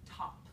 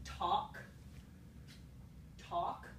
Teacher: So note that the k at the end of talk and the p at the end of top, the only difference in those two things is that p is made at the bilabial place of articulation and k is made at the velar place of articulation